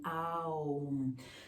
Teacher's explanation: the mouth will create the sound as it goes from the open, relaxed, then it becomes smaller, and then it closes itself